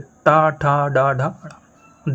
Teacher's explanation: जब भी आप टा, ठा, डा, ढा, ढ़ा बोलते हैं, आपकी जीभ का सामने वाला हिस्सा जरूर टकराता है आपकी तालु से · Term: मूर्धन्य